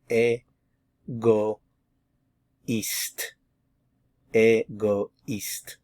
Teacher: separating these two vowel sounds instead of like a wa sound normally if the O and the I are together. When you have the tréma, it forces you to leave this in its own syllable, and this is a new one.